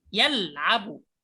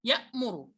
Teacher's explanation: انظر صوت اللام يأخذ حيزا يطول شيئا نسبيا عن صوت الهمزة. الهمزة تقطع مرة واحدة يا. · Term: البينية